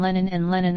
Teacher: Some dialects do not contrast // and // in unstressed positions, so that rabbit and abbot rhyme and Lenin are homophonous, a dialect feature called weak vowel merger